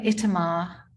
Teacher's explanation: she was meticulous about stressing the final syllable